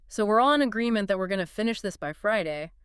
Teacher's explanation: With that rising tone, he's not actually asking if it's possible.